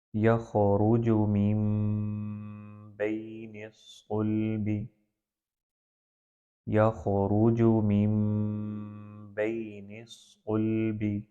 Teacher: نون سکون کو پہلے میم میں تبدیل کر دینا ہے، دونوں ہونٹوں کو ملا کر، اور ملانا ایسا ہو کہ جس میں بالکل بہت زیادہ سختی نہ ہو، غنہ کے ساتھ ادائیگی کی جائے تو وہ اقلاب ہوتا ہے۔ جیسے سورۃ الطارق کی آیت 7 میں یخرج من بین الصلب، یخرج من بین الصلب، بالکل نارمل ہونٹوں کو آپس میں ملانا ہے۔